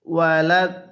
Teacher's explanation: আগে আমরা দদের মধ্যে চার আলিফ টান দিয়ে দিব এরপরে আমরা দকে লামের সাথে লাগাবো